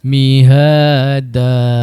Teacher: digantikan tanwin kepada baris atas dan dibaca dengan kadar dua harakat